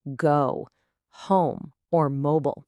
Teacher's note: your mouth is making two sounds that glide together. It moves from an O to a W sound. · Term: long O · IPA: /əʊ/